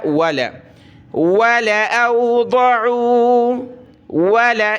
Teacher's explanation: صرف لام پڑھنا ہے، لام کو کھینچنا نہیں ہے۔ واو زبر وا، لام زبر لا، ولا ولا اوضعوا ولا، اس طرح پڑھنا ہے۔